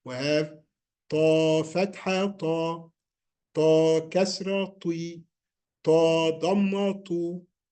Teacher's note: the tip of the tongue touches the gums of upper 2 front teeth.